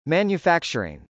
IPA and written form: m.ænjəfˈæktʃɚɪŋ (manufacturing)